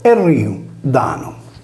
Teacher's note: in area campidanese aggiunge al prefisso la prostesi vocalica /E/, prima della consonante liquida /r/